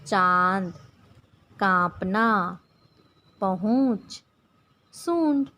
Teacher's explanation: किसी वर्ण का उच्चारण करते समय हवा नाक और मुंह दोनों से निकलती है तो उसकी शिरोरेखा के ऊपर चंद्र बिंदु लगाया जाता है, जिसे अनुनासिक कहते हैं।